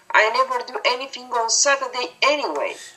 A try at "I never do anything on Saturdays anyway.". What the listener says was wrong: so grammatical word endings there. Be careful on the S. The word Saturday, in both cases, Saturdays, you weren't pronouncing that S ending.